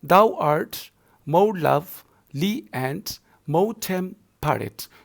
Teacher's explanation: Similarly, the second line, thou art more lovely and more temperate. So art will be given stress, love will be given stress, more will be given stress, and more temperate, and rate will be given stress. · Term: iambic pentameter